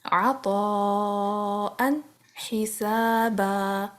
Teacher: یا دیکھیں یہاں پہ الف ایڈ نہیں ہے، ملا کے پڑھیں گے عطاء حسابا. یہ اینڈ آف دی آیا پہ میں رکی ہوں تو میں نے بن نہیں کہا، میں نے با کہا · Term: مد عوض